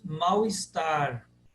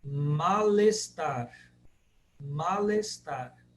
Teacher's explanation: Juntando o L com o E.